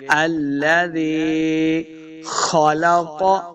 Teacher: خا اور قاف دونوں کو موٹا پڑھنا ہے، دونوں حروف مستعلیہ سے ہیں